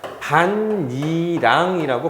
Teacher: 디귿이 뭐로 바뀌냐면 니은으로 비음화 현상을 일으키게 됩니다